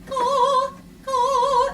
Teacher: It's like an Italian K. It's not a ka with a lot of aspiration like an American H, but ka, ka.